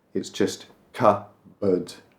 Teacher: And we don't pronounce the P, it's just cupboard. We barely say board.